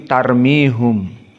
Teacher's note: Yaakub tidak membaca tarmihim maka Yaakub membaca dengan dommah